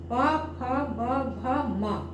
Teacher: अब देखिए इसमें पूरा स्पर्श कर रहा है, दोनों होठ, ऊपर का और नीचे वाला होठ आपस में पूरा स्पर्श कर रहा है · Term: स्पर्श व्यंजन